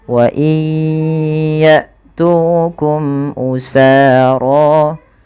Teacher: masukkan bunyi nun kepada huruf ya karena dia ada idgham bi gunnah, yaitu terjadi ketika ada nun sukun bertemu dengan huruf ya, maka masukkan nunnya kepada huruf ya dan ditahan.